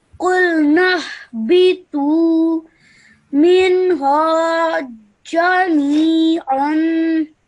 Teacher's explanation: But because you have to join the noon to the ha over here, both these alifs become silent and you ignore them and you straight away join the noon to the ha